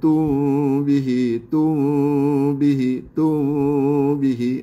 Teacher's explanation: tak boleh sampai tum itu dah masuk kepada makhraj huruf ba